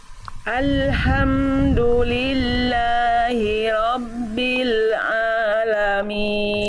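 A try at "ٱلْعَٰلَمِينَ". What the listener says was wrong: Tinggal di ain nanti dilatih ya, jangan sampai masuk hidung, tapi alamin. Alhamdulillahi rabbil jangan masuk hidung. Ain itu masuk hidung kurang sempurna.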